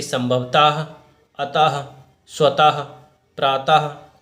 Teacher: इस तरह से इस विसर्ग की ध्वनि हा उच्चरित हो रही है।